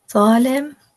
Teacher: Va is pronounced heavily. The root of the tongue is raised upward.